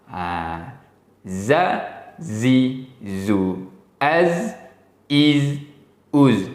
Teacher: Sekarang huruf zai hujung lidah sentuh pada gusi gigi gunting belah bawah.